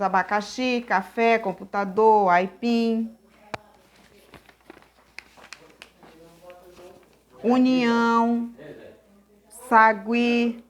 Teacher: oxítona a sílaba tônica é a última